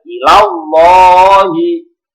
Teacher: Lam tafhim lafaz Allah didahului dengan harokat fathah, Ilallahi dibaca tebal.